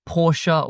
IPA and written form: pɔʃə (Porsche)